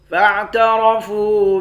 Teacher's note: را کو موٹا پڑھیں گے، فا کو واو کے ساتھ ملا کر ایک الف کے مقدار کھینچیں گے